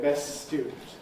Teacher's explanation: when we have a word that ends in st like best but the next word begins with a consonant like student we tend to leave out the t. So rather than saying best student which is difficult we say best student with a long s best student. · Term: elision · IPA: ˈbes ˈstjuːdn̩t